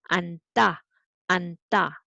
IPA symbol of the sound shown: 안따